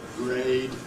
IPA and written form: greɪd (grade)